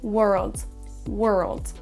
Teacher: même si on a un O dans le mot world, il faut le prononcer quasiment comme un E.